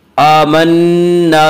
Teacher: आमन्ना नून मुशद्ददा गुन्ना होगा।